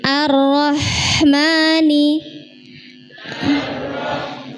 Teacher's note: ha itu mengalir nggih ketika sukun